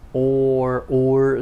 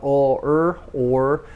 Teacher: the r in english er in some ways it's kind of like a vowel and it kind of forms a double vowel with the vowel before